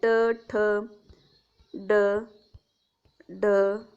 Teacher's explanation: ट वर्ग जो आहे तो संपूर्ण ट वर्ग मूर्धन्य आहे. ट ठ ड ढ आणि न हे सगळे मूर्धन्यमध्ये येतात.